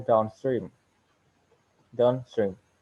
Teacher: the primary stress is placed on the second word the secondary stress on the first word